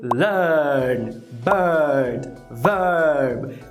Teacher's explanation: Nome técnico, vogal média central roticizada